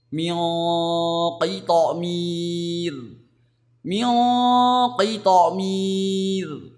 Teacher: Kita harus menebalkan saat kesamaran terjadi atau saat mendengungkannya. Ya, tidak boleh tipis. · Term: ikhfa hakiki